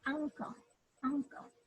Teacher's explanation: the midsection of the tongue may be pressed against the soft palate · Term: velar